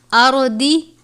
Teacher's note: دواد حروف مستعلیہ میں سے ہے، اردی نہیں پڑھنا بلکہ آرودی، را کو بھی پر پڑھیں گے اور دواد کو بھی۔